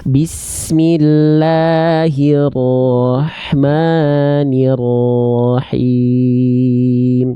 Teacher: Tinggal tebalkan huruf ro, vokal o-nya itu bukan karena kita sengaja mengokkan, tapi angkat pangkal lidah.